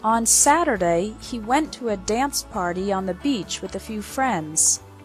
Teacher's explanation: the stress is on the words Saturday went dance party Beach and Friends